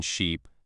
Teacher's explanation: For the vowel slash lengthen slash like in sheep, your tongue is high and forward in your mouth and your lips are spread